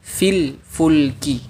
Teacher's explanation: Pada dua kata ini ada ya sukun bertemu lam sukun. Karena huruf ya termasuk huruf mad, maka dihapus sehingga dibaca fil fulki, bukan dibaca fil fulki.